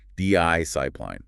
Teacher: The stress the emphasis is clearly on the first syllable.